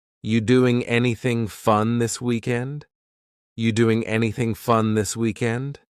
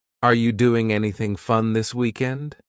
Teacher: the word are it's on vacation it's just gone somewhere